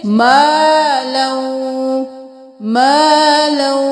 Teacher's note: क्योंकि अलिफ है तो एक अलिफ के बराबर खींचे